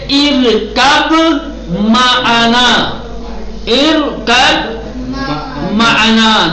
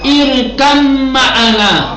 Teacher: اب نمبر 2، حرف بے حرف میم میں جب بھی کسی کلمے میں حرف بے کے بعد میم آئے، اگر بے پر ساکن ہے تو بے کو حذف کر دیں گے اور میم کو تشدید دے کر پڑھیں گے. جب بھی بے اور میم اکٹھا آ جائیں، اگر بے ساکن ہوگا تو اس کو حذف کریں گے اور میم کو تشدید دیں گے، یعنی ادغام کے ساتھ پڑھیں گے.